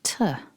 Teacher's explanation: Focusing on syllable 1 then, we've got a short t followed by the schwa vowel